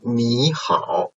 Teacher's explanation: if a third tone syllable is followed another third tone syllable, so the first one, its tone change into second tone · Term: third tone Sandhi